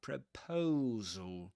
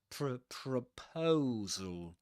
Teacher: proposal with a schwa at the beginning